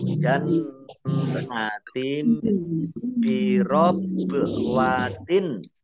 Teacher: Kemudian jannatim nun tasdid dibaca mendengung atau ditahan 2 harokat. Kasroh tanwin bertemu dengan huruf ba bacaan iklab ya, dibaca membalik, baknya dibaca mim terlebih dahulu ya. Jannatim bi ditandai dengan ada mim kecil yang berdiri ya.